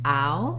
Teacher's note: You just want to move from a more open, unrounded vowel, ow, to a more closed, rounded vowel. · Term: diphthong ow